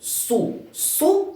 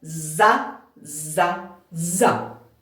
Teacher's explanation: звук с глухий ми його говоримо трохи тихіше і не дуже чітко а звук з дзвінкий